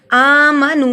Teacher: ایک الف کے برابر لمبا ہوگا. آمنو نو اس لیے لمبا ہوا کیونکہ جزم والی واو سے پہلے پیش ہے. حروف مدہ ایک الف کے برابر لمبا ہوگا.